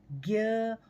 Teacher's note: ज्ञ का जो पुराना उच्चारण संस्कृत ध्वनियों में किया जाता था, उसमें ज और य को मिलाकर ज्य की तरह से उच्चारण होता था, लेकिन आज हम हिंदी में जिस ज्ञ का प्रयोग करते हैं उसमें ग और य का मेल सा सुनाई पड़ता है।